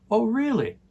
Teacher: And the intonation goes up for the question.